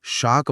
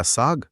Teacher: श बोलने के लिए जीभ को तालू के पास ले जाकर दबाव बनाना पड़ता है। गर्म हवा निकालनी पड़ती है।